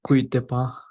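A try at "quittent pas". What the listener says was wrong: হ্যাঁ জি, কুইতে না, ওটা কিথ পা, এবার কিথ। ইউ লেটারের পরে ইউ আসলে ওটা in most of the cases উচ্চারণে আসে না, হ্যাঁ, ওটা কিথ হবে, হ্যাঁ। নো সো কিথ পা, এরকম লেখা আছে, ইল নো সো কিথ পা।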